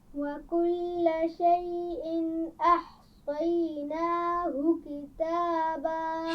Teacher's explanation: احصیناہ صاد کو موٹا پڑھیے اور آخر میں ہا کی آواز کو بھی واضح کیجیے